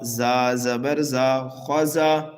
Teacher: زا حروف صفیریہ میں سے ہے، سیٹی کی آواز دے کر کے پڑھیں گے